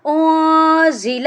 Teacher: جب انزل پڑھنا ہے تو نون کے اوپر ہم نے ناک میں آواز کو چھپا کر پڑھنا ہے ، کیونکہ زا جو ہے یہ حروف اخفا میں سے ہے،